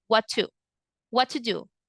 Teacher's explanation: the T of the word what goes silent